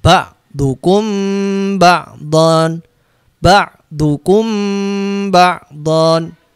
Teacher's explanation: mim sukun ketemu Pak harus disamarkan dan didengungkan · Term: Ikhfa Syafawi